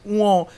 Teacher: উঁ, এটা যদি আমি বলি সেটা কিন্তু নাক দিয়ে বেরোচ্ছে